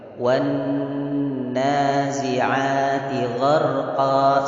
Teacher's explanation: Di situ ada huruf nun, gunnah di atas, maka digunnahkan 2 harokat boleh, 3 harokat juga boleh.